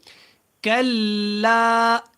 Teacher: یہ لام باریک ہوگا، یہ اللہ والا لام نہیں ہے